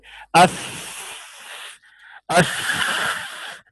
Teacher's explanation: सा में रिखावत है आवाज जारी होगी